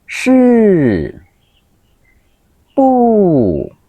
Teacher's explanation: Thanh bốn: giống như vật rơi xuống